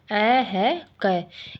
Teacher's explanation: कंठ से उच्चारण होता है, इसे बोलकर देखने से भी पता चलता है। सीधा आवाज़ इसका कंठ से आ रहा, ना जीभ ऊपर नीचे हो रही है, ना दांत आपस में भिड़ रहे हैं, ना लिप्स होठ भी आपस में नहीं भिड़ रहे हैं।